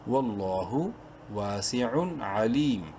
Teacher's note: تنوین کے بعد عین جو ہے وہ حروف حلقی میں سے ہے، یہاں پر اظہار ہوگا